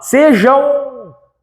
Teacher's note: Então nós temos um ditongo nasal no final dessa palavra. Por que nasal? Porque sai pelo nariz.